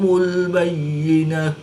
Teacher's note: گول تا کو وقف کی حالت میں ہا ساکن سے تبدیل کر کے پڑھیں گے